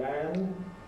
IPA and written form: lænd (land)